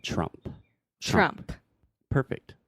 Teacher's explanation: And then finally, there is no vogal de apoio. So you don't want to say the E at the end. The last sound is the P sound, the P. So we're saying Trump.